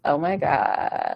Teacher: the vocal fry really just comes in when you're super low, like, oh my God, like Kim Kardashian style.